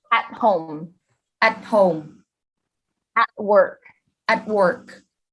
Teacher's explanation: like a normal T, but then you don't release the air. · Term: hold the T